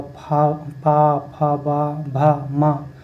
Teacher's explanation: इनको बोलने में ओष्ठ का प्रयोग होता है, इसलिए उनको ओष्ठ ध्वनि कहते हैं